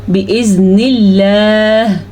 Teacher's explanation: लफ्ज़ अल्लाह को बारीक पढ़ेंगे क्योंकि लफ्ज़ अल्लाह से पहले ज़ेर है।